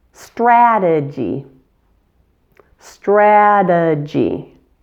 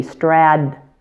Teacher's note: Did you hear the D in the middle of the word where you see the T? You actually hear a D.